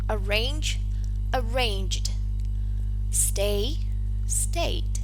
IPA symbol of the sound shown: d